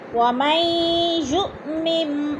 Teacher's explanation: وَمَن یُؤْمِن، وَمَن میں ادغام ہو رہا ہے، یُ کی حمزہ ساکن ہے جھٹکا دے کر پڑھیں گے